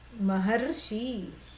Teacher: Maha plus Rishi, there is a sandhi, that's why the R becomes Ar. The sound itself changes from a vowel, it becomes a consonant.